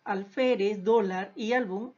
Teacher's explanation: llevan la mayor fuerza de voz en la penúltima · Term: palabras graves